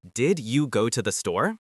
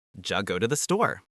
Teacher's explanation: D plus Y becomes a J sound.